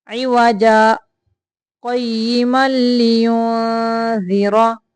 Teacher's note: सकता करते हुए आवाज को 1 सेकंड तक रोकना है, सांस को नहीं रोकना , सांस को जारी रखना है। इवजा क़य्यिमल लियुनज़िरा बअसन, यहाँ